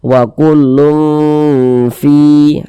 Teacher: bunyi tanwinnya kita baca samar, kemudian kita dengungkan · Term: ikhfa hakiki